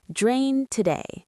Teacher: Notice how the D in drained flows smoothly into the T in today.